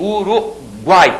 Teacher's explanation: aqueles três sons vocálicos apareceram na mesma sílaba não posso dividir aquilo nesse caso a primeira vogal é sempre · a primeira vogal é sempre a semivogal a segunda que a que fica no meio é sempre a vogal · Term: tritongo